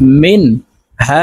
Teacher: নুন সাকিনের পরে ইজহারের হরফ হাসে তো এই নুনকে গুন্না ছাড়া স্পষ্ট করিয়া পড়তে হবে